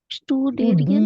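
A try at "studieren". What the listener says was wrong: स्टूडियन, स्टूडियन नहीं, डियन, आप एरियन बड़ा कहते हैं, आप पता नहीं आपके नाम का। स्टूडियन। ठीक है, स्टूडियन,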